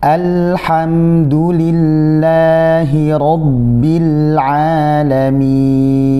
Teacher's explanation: hamzah masih jelas dan tipis. Kemudian setelahnya juga ada lam yang tipis.